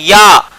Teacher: अर्धस्वर कहते हैं, और इसका उच्चारण कहां से होता है तालु से